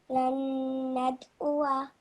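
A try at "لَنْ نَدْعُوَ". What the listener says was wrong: Just try to make proper ayn sound. It's coming from your throat, and you'll feel vibration in your throat as well. So lan nad'uwa.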